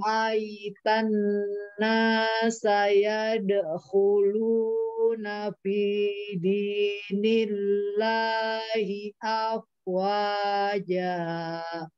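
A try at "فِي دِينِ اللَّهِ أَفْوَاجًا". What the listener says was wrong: Pinya tipisin. Fi jangan P. Fi dinillahi afwaja.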